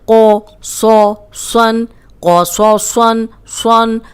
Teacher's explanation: لیکن یہ تینوں موٹے ہیں، قوف موٹا، صاد موٹا، صاد موٹا، تینوں موٹے پڑھنے ہیں۔ قو صو سن، قو صو سن، سن، اب تنوین کے ساتھ بھی موٹا ہی ہوگا۔